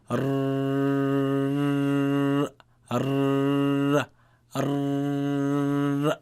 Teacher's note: If you look here, this front part of the tongue, when it is suspended against the upper palate, the frontal upper palate, muqaddam al-hanak al-azmi, then what happens is that when the tongue is suspended there, the sound flows out from the front of the tongue, from this small furja, or small space between the tongue and the palate that allows the sound to flow out.